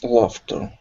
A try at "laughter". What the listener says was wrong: Now instead of laughter, it's la. Open your mouth up just a bit more. Laughter.